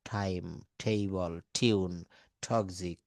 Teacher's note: এই টি এর উচ্চারণ যখন ঠ হচ্ছে তখন কিন্তু এটা এসপিরেটেড